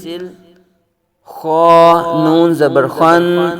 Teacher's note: خا کو پر پڑھیں گے، حروف مستعلیہ میں سے